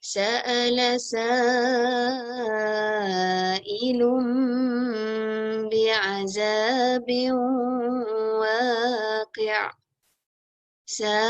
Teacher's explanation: Okay, panjangnya 4 harakat. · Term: mat wajib